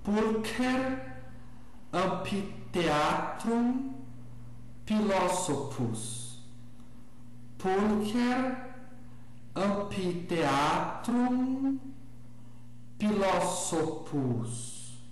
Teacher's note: os grupos CH, PH e TH são pronunciados como K, P e T, só que com uma aspiração leve